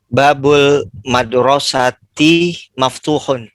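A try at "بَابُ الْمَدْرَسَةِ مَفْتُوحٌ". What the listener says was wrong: Mumtaz. Insyaallah.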